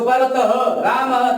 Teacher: ये विसर्ग है और इनका उच्चारण ह की तरह किया जाता है। ये स्वरों के बाद में आया जाता है।